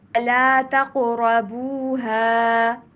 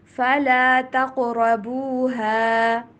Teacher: قاف کے پر کلکلا اور قاف اور را کو موٹا کر کے پڑھنا ہے